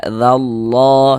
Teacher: Kalau ada lafaz Allah sebelah sininya ada tanda baca fathah, seperti ini lafaz Allah dibaca tebal huruf lam jalalahnya